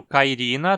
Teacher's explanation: O nome do gênero, Cairina, tem a penúltima sílaba, ri, com um i longo, então é paroxítona.